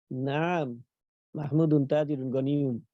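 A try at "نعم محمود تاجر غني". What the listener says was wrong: মাশাআল্লাহ।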